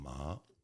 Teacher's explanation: second tone that's like you're asking a question